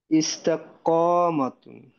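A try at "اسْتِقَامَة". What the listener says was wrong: না, ইস্তি, তার নিচে কিন্তু কারেক্ট, ইস্তিকামাতুন, ইস্তিকামাতুন, এরকম হয়ে যাবে।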